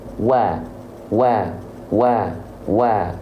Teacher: wau itu mesti dilafalkan maju bibir nya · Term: huruf wau